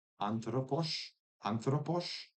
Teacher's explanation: Like for instance in anthropos the the anthropos the release of the tea is is harder to get because it's kind of shoved inside of the n and then you're getting sort of just the fricative release of the theta